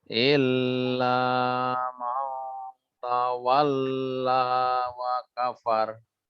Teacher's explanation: ikhfanya dikasih durasi 2 harokat